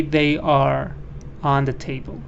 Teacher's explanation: even in British if the next word starts with a vowel again you have to say the r